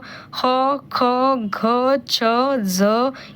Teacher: ज्या वर्णाचा उच्चार करताना फुफ्फुसातील हवा तोंडावाटे जोरात बाहेर फेकली जाते त्यांना महाप्राण असे म्हणतात